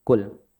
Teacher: Tidak ada pantulan pada huruf lam.